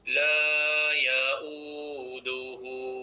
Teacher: Jangan terputus pada ya dengan u tu. Sambung terus.